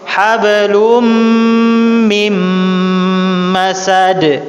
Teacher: ketika nun sukun dia akan berubah menjadi hablum mim, langsung masuk mim. Enggak ada nunnya, enggak dianggap. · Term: idgham bi gunna